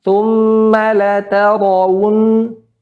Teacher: Kalau nggak tebal ya tipis ya. Pada ro berharakat fathah maka dibaca tebal.